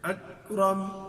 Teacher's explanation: جو کاف ہے بعد میں اکرم، تو وہاں پہ کسی طرح کی کوئی حرکت ایسی نہیں دیں گے، بلکہ وہاں پہ آواز کو ذرا بند کر دیں گے. اکرم، باقی اس کی تفصیلی ادائیگی انشاءاللہ ہم جب وہ کاف کو پڑھیں گے تو پھر پڑھیں گے اس کی ادائیگی کا طریقہ.